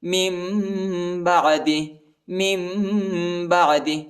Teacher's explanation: نون ساکن کے بعد با آیا ہے، اس لیے جو ہے نون نہیں پڑھا جاتا، میم پڑھا جاتا ہے ، من بعد من بعد، اور اخفا بھی کریں گے، ٹھیک